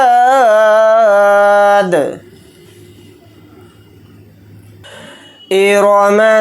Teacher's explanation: را کے اوپر زبر ہے تو را کو موٹا یعنی پر پڑھیں گے